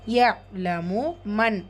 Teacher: நூன் சுக்குூனுக்கு அப்புறமா letter ஹா வந்துருக்கு. இது ஹார் உள்ளது உள்ள மாதிரி ஓதணும் குண்ணா செய்யக்கூடாது.